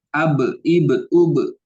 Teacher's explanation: Karena mengandalkan dua bibir. Nah, kalau ba ini harus mengandalkan dua bibir. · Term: huruf ba